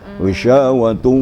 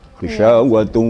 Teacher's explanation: Bisyawatu, memang banyak ke hidung suaranya.